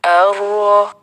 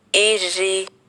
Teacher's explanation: رو پر جب زبر یا پیش ہو تو موٹی پڑھی جاتی ہے، اور اگر اس کے نیچے زیر ہو تو باریک پڑھی جاتی ہے